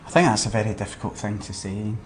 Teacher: he's a bit breathy when he's talking